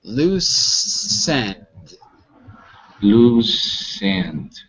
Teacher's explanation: you gotta connect the S to the word end